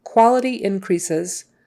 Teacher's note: an S in the middle and a Z sound on the end, because that ES is usually an EZ sound.